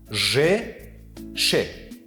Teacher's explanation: ж ва ш ҳамсадоҳои пеши забонии роғи думахраҷаи шавшувдор мебошанд. ҳангоми тавлиди онҳо қисми пеши забон ба тарафи коми сахт бардошта мешавад ва ду тарафи қисми пеши забон ба ду тарафи пеши ком ба ҳиссаи наздики милкҳо мерасад.